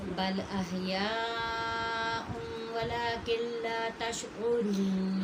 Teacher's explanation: لیکن اگر لام اور را آ جائیں تو کمپلیٹ مرجنگ ہوگی، نون کی بالکل بھی آواز یہاں نہیں آنی چاہیے